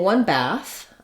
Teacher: if I'm saying one bath I'm going to use voiceless th